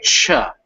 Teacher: that ch sound in english that's a cha not a sha so with a hard beginning